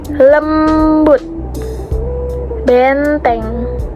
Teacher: bagian tengah lidah kita agak dinaikkan dan bentuk bibir kita juga netral seperti e tadi, tidak tersenyum dan juga tidak membulat. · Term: vokal sedang tengah